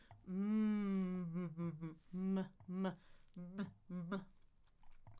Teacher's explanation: The M is two lips, but the air goes out your nose because that's a nasal sound.